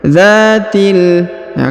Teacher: Huruf dza dipanjangkan 2 harokat karena terdapat alif di depannya.